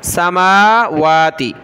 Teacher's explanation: میم اور واو کے اوپر کھڑا زبر ہے، دونوں کو ایک الف کی مقدار کھینچنا ہے اوپر کی طرف